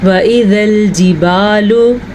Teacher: سب سے پہلے واو کی مقدار اور الف کی دونوں کی کم ہے